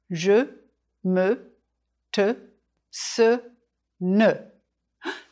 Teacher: In English, this unstressed vowel sounds like the central vowel of cinema. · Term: schwa sound